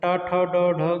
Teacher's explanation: टा ठ ड ढ की बात करेंगे तो ये आपका मूर्धन्य हो जाता है